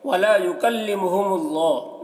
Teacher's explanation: اللہ کلام کو پر پڑھیں گے، اللہ کلام سے پہلے پیش ہے